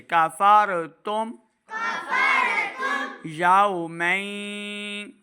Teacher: यहाँ पे मीम साकिन को ज़ाहिर करेंगे, बगैर गुन्ना के पढ़ना है।